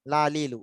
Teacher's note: লাম উচ্চারণের সময় কিন্তু দাঁতের সাথে মারিটাতে লাগে